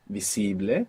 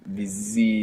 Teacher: you're not pronouncing that S as a z like in English